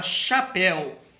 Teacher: vamos ver na palavra chapéu por exemplo ué é uma vogal u neste caso aí tá sendo pronunciado mais fraco ele tá só complementando a sílaba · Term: semivogal